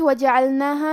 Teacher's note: حرف العین کو ہم حلق کے درمیان والے حصے سے پڑھیں گے اور کیونکہ یہاں لام ساکن ہے تو ہمیں لام کو ظاہر کرنا ہے.